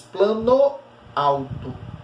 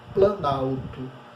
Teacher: Na hora que você juntar as duas, que formar a palavra planalto, veja que a palavra plano perdeu a pronúncia do O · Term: aglutinação